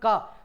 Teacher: का बोलते हुए आप यह महसूस करेंगे कि आपकी जो सांस है वह कंठ से बाहर निकल के आ रही है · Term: कंठ व्यंजन